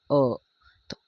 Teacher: अ का उच्चारण करने के लिए हमें जीभ के मध्य भाग का प्रयोग करना पड़ रहा है इसलिए इसे मध्य स्वर कहते हैं क्या कहते हैं मध्य स्वर